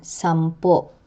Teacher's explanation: The stress is on the last syllable, which is pronounced with a glottal catch. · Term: Acute glottal